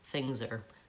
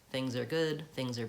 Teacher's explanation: when I'm saying things are, I'm actually reducing that R.